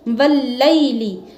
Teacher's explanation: या यहां पे मद्दा नहीं है लीन है क्योंकि या साकिन से पहले जबर है लाम पर इसलिए हमने इसको जल्दी पढ़ा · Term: रूफे लीन